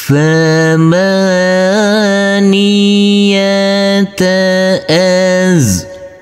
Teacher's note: Huruf waw boleh kita baca dengan panjang 2, 4 maupun 6 harokat.